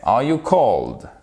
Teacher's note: Et on remonte l'intonation. Pourquoi? Parce que c'est une question à laquelle on répond par yes ou par no.